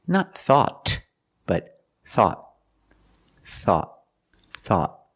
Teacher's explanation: At the end, the tongue goes up and makes a stop T.